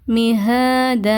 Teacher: அலிப் சகீரா இருக்குது அதாவது கடா ஜபர் இருக்கு சோடூ கவுண்ட்ஸ் நீட்டி ஓதுங்க ரொம்ப நீட்டி ஓதிராடாதீங்க மிஹ இவ்வளவு தூரம் நீட்ட வேணாம் மிஹத இவ்ளோ நீட்டி ஓதுனாலே போதுமானது.